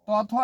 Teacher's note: तौथो ये आपका दंत से बोला जाता है